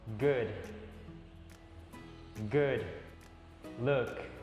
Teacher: suaranya agak seperti E, namun mulutnya seperti U. Suaranya E.